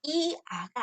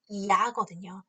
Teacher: 이중모음을 잘못 발음하게 되면 두 개의 음절로 발음하는 경우가 있어요. 학습자들의 오류가 나타나는 거죠.